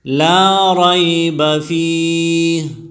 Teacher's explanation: لا میں الف مدہ ہے، الف سے پہلے زبر آیا ہے تو اس کو الف مدہ کہتے ہیں، اس کو ایک الف کی مقدار کھینچ کر پڑھیں گے. رائب میں را موٹی پڑھی جائے گی، اور اس میں یا لین بھی ہے.